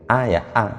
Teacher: Jadi hamzah itu begitu a ya a, tidak ada suara desis, tidak bisa ada desisnya. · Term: jahr